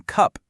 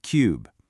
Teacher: U goes from that clipped sound in cup to the drawn out cube. It's a tiny change on the page with a huge impact on the sound.